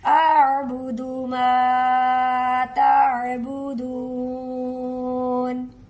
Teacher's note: ला अअबुदु मा तअबुदून, اس کو دیکھیں ادا کرتے وقت حمزہ کی آواز الگ سے آئے گی، عین کی الگ سے، حمزہ کو سادہ پڑھیں گے، عین کو حلق سے نکالیں گے